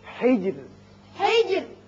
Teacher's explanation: یہاں را جب ساکن ہو جائے گا، چونکہ پیچھے زیر ہے اس لیے یہاں باریک رہے گا